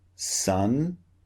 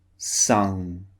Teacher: use your tongue towards the front of your mouth and use the back of your tongue to block the air